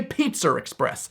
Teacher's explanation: it's not okay also British people can't pronounce Pizza Express without put an R in between the two words